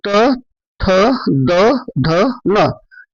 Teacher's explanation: तो इसमें जिह्वा दंत को स्पर्श करती है। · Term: तवर्ग